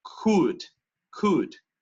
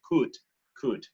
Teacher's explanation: para esa D, no como en español, la lengua detrás de los dientes, tocando el paladar la punta